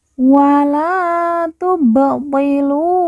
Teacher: Ba sukun kita baca pantul karena ba sukun merupakan salah satu dari huruf qalqalah atau huruf pantul.